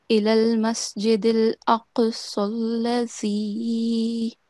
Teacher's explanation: this is a thick letter, this qaf, okay? And in addition to that, it is it should be pronounced with a jerk, okay? With a jerking sound. So this is going to be إِلَى الْمَسْجِدِ الْأَقْصَى الَّذِي.